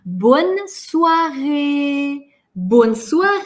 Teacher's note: поскольку мы тянем и воздуха нам не хватает интонация идет наверх